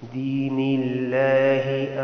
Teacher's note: یہاں لفظ اللہ سے پہلے زیر ہے، اس کو باریک پڑھیں گے لفظ اللہ کو